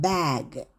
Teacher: B 이렇게 해서 성대가 울려야 돼요. 그래서 중요한 건 그대의 입술이 있으면 입을 다물고 살짝 떨어주세요. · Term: 유성음